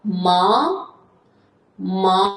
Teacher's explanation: Uchinchi ton. Tepadan pastga tushamiz, pastdan tepaga chiqamiz. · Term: Ikkinchi tonimiz